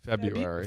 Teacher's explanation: A lot of people just ignore that R.